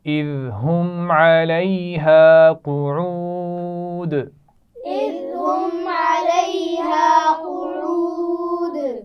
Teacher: ذال کے مخرج کا خیال رکھیے، سیٹی کی آواز نہیں آنی چاہیے. ہم علیہا، میم ساکن کے بعد نہ حرف میم ہے نہ با ہے، اس لیے یہاں پر غنہ نہیں کیا جائے گا.